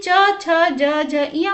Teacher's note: बोलते समय जो है तालु का जीभ जो है तालु से स्पर्श हो रहा है, इसीलिए इनका उच्चारण स्थान है तालु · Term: च वर्ग